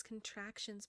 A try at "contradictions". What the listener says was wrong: Wait, did you say contractions, not contradictions? I think you said contractions.